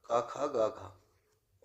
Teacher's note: कंठ से उत्पन्न होने वाले वर्ण कौन से हैं? तो फर्स्ट वर्ग ही बताना है कंठ से।